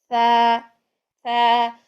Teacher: फिर वैल, बारीक है, सा, सा. सा को भी नरमी से जुबान की नोक को ऊपर वाले दांतों के किनारों से लगाना है, दांतों के ऊपर जड़ों की तरफ नहीं जाना, नीचे उसके किनारे रखने हैं.